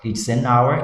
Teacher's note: O som do H é mudo, ele não é pronunciado.